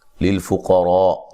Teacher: قاف کو موٹا ادا کرنا ہے، را کو بھی موٹا ادا کرنا ہے